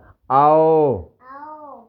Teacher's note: دیکھیں اب واؤ ہونٹ کو ناتمام گول کرنے سے یہ واؤ ادا ہوگا